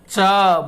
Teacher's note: जैसे क बोलते हैं तो क यह कंठ से आता है। च बोलेंगे तो तालु से आएगा